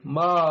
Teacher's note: الف مدہ اور کھڑی زبر کی مشق یہاں پہ موجود ہے، جیسے ما. ٹھیک ہے، اب ما میم کے اوپر کھڑی زبر ہے تو ہم پڑھیں گے ما، الف کے برابر پڑھیں گے